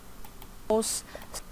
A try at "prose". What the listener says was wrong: This word is prose, not pose.